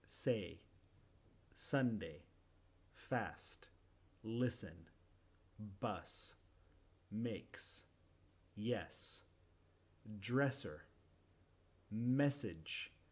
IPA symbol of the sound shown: s